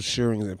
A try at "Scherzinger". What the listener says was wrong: Scherzinger, nigga, you said shh and gave up and just tried to smooth back.